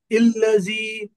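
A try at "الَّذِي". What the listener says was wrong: हमजा पे जबर है ना, अल होता। अल्लदी।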